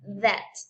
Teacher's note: And then we have TH, but with vibration